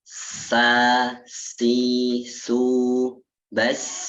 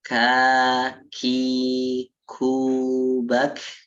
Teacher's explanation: Jadi terbagi menjadi dua, yaitu yang pertama hamas, yang kedua adalah jahr. Jadi hamas itu yang mana ketika kita membacanya itu seperti ada bisik-bisik gitu. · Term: sifat hamas